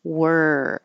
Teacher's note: to do a lot of movement forget about how it's spelled it looks like o r but it sounds like e r so you're just making the sound of the r